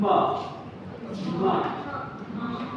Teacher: What are the articulators? Upper lip and lower lip. Nothing else.